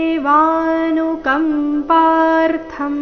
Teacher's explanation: ತೇಷಾಮೇವ ಮೊದಲನೇ ನಾಲ್ಕು ಅಕ್ಷರ ದೀರ್ಘ